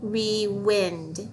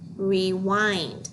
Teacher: change that short vowel to a long vowel I